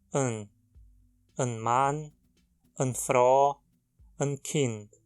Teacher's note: A pronúncia é como um schwa, seguido de um n, an. Ou muitas vezes é tão reduzido que se consegue escutar apenas o som do n, an Mann, an Frau, an Kind.